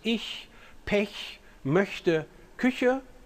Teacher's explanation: the palatal fricative ch, the answer is pretty clear. It exists in both languages. In German, it occurs in contexts where a front vowel precedes